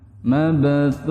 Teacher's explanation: Qalqalah yang ada di tengah dan pantulannya kecil, teman-teman ya. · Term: qalqalah sughra